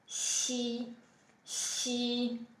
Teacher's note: So you get something like xi, as in 喜欢, which means I like. Xi, xi, just like an S, but with the tongue further back. · So you push your tongue a little bit back. It's a bit like an S, but it's further back. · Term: alveolo-palatal